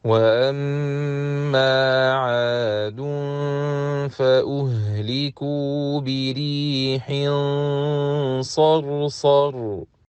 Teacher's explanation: we should pronounce the Ra heavy, as it is Sakina, preceded by a letter that has Fatha